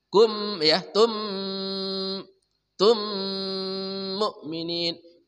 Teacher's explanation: Mim mati bertemu mim idgham mimi atau idgham mislan shigharain bil gunnah. Sempurna dengungnya, kedua mulut ditutup rapat.